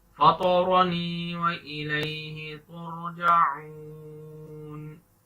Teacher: تو آ کو موٹا پڑھیں گے، یہ ہیوی لیٹر ہے، تو آ اور را ان کو تفخیم کر کے پڑھیں گے، یعنی پر کر کے پڑھنا، موٹا کر کے پڑھنا